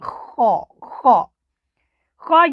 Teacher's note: یاد رہے خا حروف حلقی میں سے ہے۔ خا گلے کے ابتدائی حصہ سے ادا ہوتی ہے، اور اس کو ادا کرتے وقت تالو کے اندر ہلکی سی خراش بھی آتی ہے۔ خا خا خا یہ موٹے حروفوں میں سے ہے، اور پورے قرآن پاک کے اندر جب بھی آپ کو خا نظر آئے، خا اس کے اوپر زبر ہو، زیر ہو، پیش ہو، یہ موٹی پڑھی ہی جاتی ہے۔